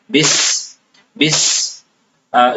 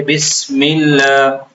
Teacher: تو تسمیہ بسم اللہ کو کہتے ہیں اور بس یہ سین ہے. سین کو سیٹی سے ادا کیا جاتا ہے. اس میں کسی قسم کی نرمی نہیں ہوتی ہے · سین بھی عربی تلفظ کے حساب سے تھوڑا سخت ہے. سیٹی کی جیسی آواز آتی ہے